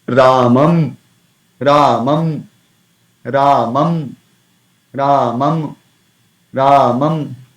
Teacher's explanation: But while pronouncing anuswara, it is just pure nasal sound. · So there definitely lips. There will be a connection of the lips, but there is not much effort of the lips involved while pronouncing anuswar.